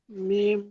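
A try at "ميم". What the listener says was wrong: মিম না, খেয়াল করেন। উম, মিমের মধ্যে আওয়াজ আগে চালু হয়ে যাবে। মিম, মিম, মিম এরকম না।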